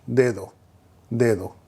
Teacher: whenever the D is in the middle of the word and not at the start of the word, then the D has a tendency to sound more like a TH